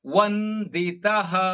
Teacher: ಭರತ ವಂದಿತಃ, ವ ಮುಂದಿನ ಅನುಸ್ವಾರ ಅರ್ಧ ನ.